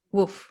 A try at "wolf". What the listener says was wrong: you don't have the l in your pronunciation